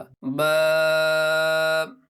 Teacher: आसान है दोनों होठों के तर हिस्से से अदा होता है जब आप होठ बंद करेंगे नॉर्मल तो दोनों होठों के तर हिस्से यानी गीले हिस्से आपस में मिल जाएंगे यहीं से बा अदा होगा · बा यह भी निहायत आसान है दोनों होठों के तर हिस्से से अदा होता है · دونوں ہونٹوں کے تر حصے سے ادا ہوتا ہے۔ جب آپ ہونٹ بند کریں گے نارمل تو دونوں ہونٹوں کے تر حصے یعنی گیلے حصے آپس میں مل جائیں گے، یہیں سے با ادا ہوگا۔